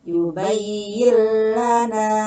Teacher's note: nun mati bertemu dengan lam, yubayyillana, itu idgham bila guna